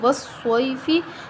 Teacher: صاد موٹا حروف ہے، حروف مستعلیہ ہے تو ہم اس کو موٹا پڑھیں گے، اور یا لین ہے، یا سے پہلے زبر آ رہی، یا ساکن سے پہلے زبر ہے تو ہم اس کو بغیر لمبا کیے، بغیر جھٹکا دیے پڑھیں گے نرمی کے ساتھ